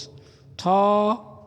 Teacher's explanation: থ হচ্ছে মহাপ্রাণ এবং অঘোষ